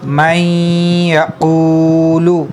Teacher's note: تو اگر ہم لوگ حروف یرملون کو دیکھیں تو یا حروف یرملون میں سے ہے، نون ساکن کے بعد یا آ گیا ہے تو یہاں پہ ادغام ہوگا، یعنی غنہ کر کے پڑھیں گے